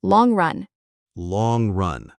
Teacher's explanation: The eng sound in long should slide into the r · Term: linking